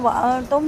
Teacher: نون ساکن کے بعد تا ہے باریک اخفا